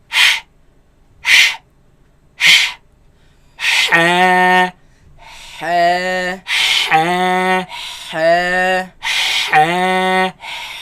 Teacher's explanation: this epiglottis moves against the back of the throat, leaving a very narrow passage, a very tight passage from which the air passes through. And that is what produces this sharp sound.